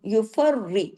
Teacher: सख्ती से रा को जोड़ना है लेकिन रा को बारीक रखना है